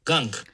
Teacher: you might hear that there's basically multiple release bursts there · It kind of sounds like he's releasing the K multiple times. And that's something that happens pretty commonly with velar stops.